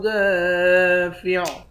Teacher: دال کے بعد الف ہے، 1 الف کے مقدار کھینچیں گے، الف حروف مدہ ہے۔